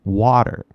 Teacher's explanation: And this gray T actually is a D because the T in American English, California English, really becomes a D a lot.